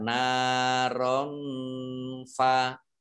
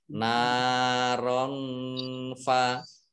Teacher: Rot rot apa fathah tanwin bertemu dengan huruf fa. Ini bacaan ikhfa. Ya, dibaca samar-samar.